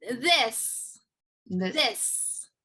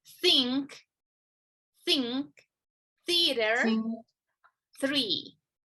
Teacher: the different two sounds of the voiced th and the unvoiced th